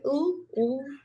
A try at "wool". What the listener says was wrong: Well, you're not pronouncing the W, it's wool.